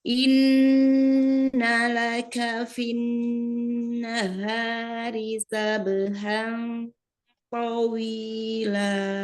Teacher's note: sempurnakan nun tasdid ya, nun musaddada. Itu gunnanya tingkatan yang paling sempurna ya.